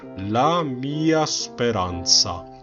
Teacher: 미야 할 때 미는 길어야 됩니다. 아가 짧아야 되고요. 음표를 두 개라고 생각하시면 돼요.